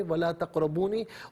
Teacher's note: تقربو میں را پر زبر ہے، را کو پر کر کے پڑھیں گے ولا تقربونی، اور وقف کریں گے تو ولا تقربون پڑھیں گے، نون کو ساکن پڑھیں گے۔